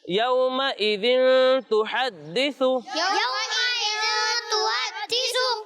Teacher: ذال میں سیٹی کی آواز نہیں آئے گی